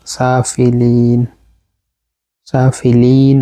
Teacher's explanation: সিনের উপর খাড়া জবর, মধ্যে আসলে এক আলিফ পরিমাণ লম্বা হবে, সাফিলিন, সাফিলিন, আবার হচ্ছে লাম জের পরে হচ্ছে ইয়া সাকিন, এটা হচ্ছে মধ্যে আসলে।